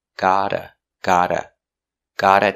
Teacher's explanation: And the T in got changes to a fast D.